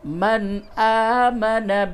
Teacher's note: آ کھڑا زبر کو تھوڑا سا کھینچیں گے، آمن زبر زیر پیش کو جلدی پڑھتے ہیں۔ · نون ساکن کے بعد یہ حمزہ ہے، اس جگہ پہ اظہار ہوگا، یعنی نون کی آواز کو بالکل ظاہر کر کے پڑھیں گے